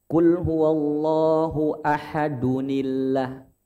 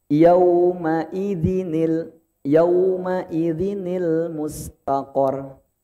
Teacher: kalau tanwin bertemu dengan alif, maka nun ini akan muncul dan diharokatkan kasroh.